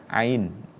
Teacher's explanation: Huruf hamzah dengan ain itu makhrajnya berbeda. Kalau hamzah ada di adnal halqi, ya. Tapi kalau ain itu berada di wasatul halqi.